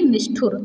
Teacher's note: देखिए ठा क्या है, मूर्धन्य है, तो यहाँ भी मूर्धन्य सा आ जाएगा।